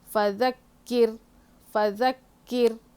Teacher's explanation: فَذَكِّرْ، فا زبر فا، زال زبر زا، کاف کو کاف کے پر تشدید ہے، سختی سے پڑھیں گے، را ساکن سے پہلے زیر ہو تو را کو باریک پڑھیں گے. فَذَكِّرْ، فَذَكِّرْ، یہاں پہ رک جائیں گے، طا ہے نا وقف مطلق، یہاں پہ رک جانا ہے.